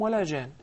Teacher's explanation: even though there is a sukoon, but there will be ghunna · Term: al-mad al-lazim al-mutatarrif